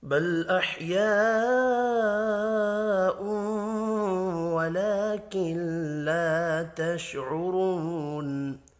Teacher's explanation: بڑی مد کو 5 الف کے برابر کھینچ کر پڑھیں گے۔ غنہ ہوگا، کھڑی زبر ہے، 1 الف کے برابر کھینچ کر پڑھنا ہے۔